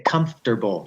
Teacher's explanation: Once you lose the vowel, then suddenly you've got M, F, R, and T all in a row.